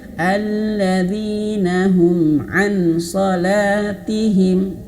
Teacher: Jadi ngambang antara huruf nun dan huruf shad, dia udah mau persiapan mengucapkan huruf shad, ready begitu. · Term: samar-samar